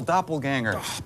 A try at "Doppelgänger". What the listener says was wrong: Honor the umlaut, Doppelgänger.